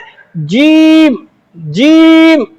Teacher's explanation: यह तालु और जुबान ऊपर में लगता है। यह जुबान का नोक ये तालों से जाके चिपकता है।